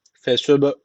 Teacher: B harfi cezim almış. O zaman burada kalkale tecviti var. Birazcık vurgulayacağız.